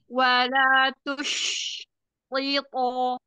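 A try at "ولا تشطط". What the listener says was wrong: Iya, tapi jangan dijeda. Tush, tiyoto. Nah, jangan. Wala tush tiyoto. Cuman ketika sukun-sukunnya itu kurang kasih zamannya, ya.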